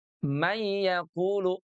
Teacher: Tidak ada, gunnahnya ya, tidak ada dengungnya, tidak ditahan juga, karena dia leburnya itu lebur sempurna, idgham kamil.